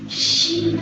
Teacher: Nah itu tengah lidah diangkat